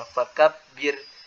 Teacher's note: Huruf ro yang didahului oleh huruf yang berkasroh itu tipis